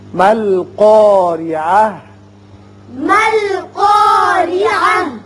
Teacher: قاف بھی پر ہوگا اور را باریک. تا جب ساکن کریں گے ہا بنے گی.